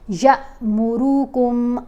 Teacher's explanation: Move یعنی کوئی حرکت، زبر، زیر، پیش، تشدید، جزم، کچھ بھی ہو تو وہ پھر حمزہ اس کو پڑھیں گے۔ یہاں ہم نے یا کو اب جھٹکا دے کر پڑھنا ہے، یا کو لمبا کر کے نہیں پڑھنا